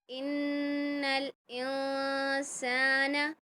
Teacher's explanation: جی غنہ ہم نے کیا 1 الف کی مقدار